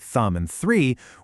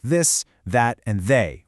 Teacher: The lesson contrasts the unvoiced th, which is what we literally just practiced with words like thumb and three, with a softer voiced th sound. You hear that voice sound in words like this, that, and they, where you actually use your vocal cords.